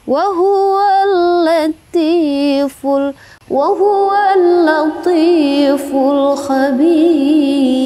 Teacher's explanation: Itu mad arid li sukun ya. Kemudian ra-nya dibaca tipis.